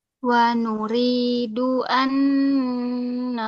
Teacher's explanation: harus ditahan sepanjang empat ketukan kemudian dengungannya disempurnakan